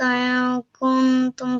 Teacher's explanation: we are concealing the sound of noon